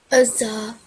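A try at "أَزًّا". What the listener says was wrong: Azza. So it has mushaddad. So give a bit more emphasis. But the azza was pronounced when your teeth were joined together, right? Yeah, you can see how when you say this word, your teeth are joint, right? So that's how you differentiate between azza.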